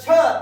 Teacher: छ चा उच्चार नेहमी यने युक्त होत असतो